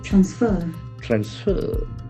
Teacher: two syllables accent falls on the second syllable